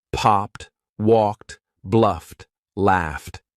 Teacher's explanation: the verb ends in an unvoiced consonant sound, remember unvoiced means your vocal cords are not vibrating